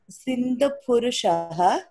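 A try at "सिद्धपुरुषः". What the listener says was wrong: Siddha Purushaha, not Sindha.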